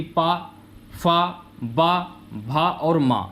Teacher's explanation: जिन वर्णों के उच्चारण में दोनों होंठ स्पर्श करते हैं उन्हें ओष्ठ वर्ण कहते हैं